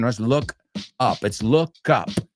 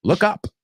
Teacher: La sonido K realmente se une con la segunda parte.